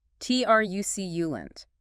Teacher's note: Three syllables. Stress on the first.